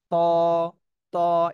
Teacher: একটু মোটা তা টা পাতলা হয়েছে আর তাই একটু মোটা হবে মোটা আওয়াজে জিহ্বার আগা সামনের উপরের দুই দাঁতের গোড়ার সাথে লাগে তটা উচ্চারণ হবে